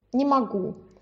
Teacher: На не тоже нет ударения. Ударение на у.